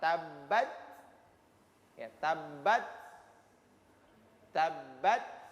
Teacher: Ketika dia sukun, karena ini bersifat hamas, ya, ada hamas itu mendesisan, ya, desisan air angin yang keluar yang terkesan tertahan. Maka dia harus ada desisan ketika dia sukun huruf ta.